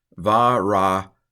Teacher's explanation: We have two apparently silent schwas right in a row. This breaks a rule because there's a rule that says when you have two schwas next to each other, the first one's a silent schwa and the second one's a vocal schwa.